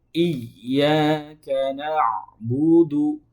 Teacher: ain itu keluarnya dari tengah tenggorokan